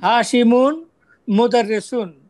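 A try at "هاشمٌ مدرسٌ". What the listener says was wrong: That's great, আপনি খুব তাড়াতাড়ি বলতে পারলেন।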